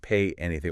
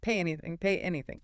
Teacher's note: Think of the yi sound at the end of pay connected to the start of anything.